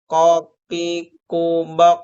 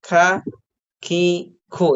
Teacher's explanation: perbedaan antara qaf dengan kaf itu kalau qaf tadi diucapkannya kan tertahan ya, baik dari segi nafas ataupun dari segi suara. Nah, sementara huruf kaf itu mengalir ya, mengalir dari segi nafas ya.